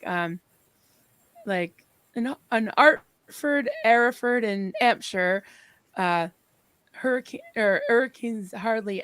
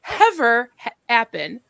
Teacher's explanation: had this really strong accent where she didn't pronounce her her H's